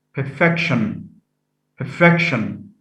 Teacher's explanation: stress is shifted from the first syllable to the second